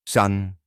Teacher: la primera palabra se muestra el sonido denominado cuña este sonido se pronuncia con la boca ligeramente abierta y la lengua baja y hacia atrás se asemeja a un sonido a corto en español como cuando